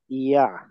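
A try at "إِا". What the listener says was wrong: এটা তো কোন লাগে শুরুতে ই আ। ই আ। একদম আপনি যেটা বলছেন আইন উচ্চারণ হয়ে যাচ্ছে ই আ। ই আ। ই আ। ই আ। আ। ই আ। ই আ। গলার মাঝখানে নিলে কিন্তু আইন হয়ে যাবে, আর একটা অক্ষর হয়ে যাবে। গলার মাঝখান থেকে উচ্চারণ করলে অক্ষর চেঞ্জ হয়ে যাবে। ই আ। ই আ। এটা আইন হয়ে যাচ্ছে।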